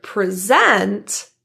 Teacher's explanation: And the word present, as in the action or the verb to talk to a group of people has the stress in the second syllable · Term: word stress